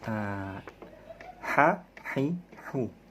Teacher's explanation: Huruf H itu tipis, jadi ada di tengah tenggorokan.